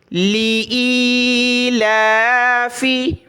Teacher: لی ای، لام کھڑا زبر لا، لی ای لا، لی ای لا، فا زیر فی، لی ای لا فی، کھڑا زبر ہے لام کے اوپر، اس کو ایک الف کی لمٹ میں ہم نے اوپر کی طرف کھینچا۔